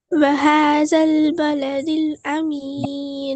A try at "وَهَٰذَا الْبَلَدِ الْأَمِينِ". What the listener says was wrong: அது பே வரணும். வஹதல் பேலதில் பே வரணும், பா வரக்கூடாது.